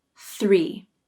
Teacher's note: start with the voiceless th sound this th receives the full pronunciation with the tongue tip out then the tongue pulls in quickly for the ER and remember to pull the tongue up and back and push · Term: thr cluster